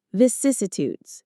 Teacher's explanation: The stress is on the second syllable, cis.